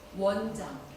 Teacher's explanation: 자, 워 발음입니다. 우로 시작하셔서 어로 끝나시면 되는 거. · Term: 이중모음